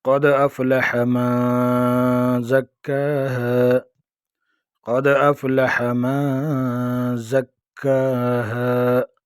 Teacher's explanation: دال پر قلقلہ ہوگا، دال ساکن ہے، آگے زبر ہے، اس میں قلقلہ ہوگا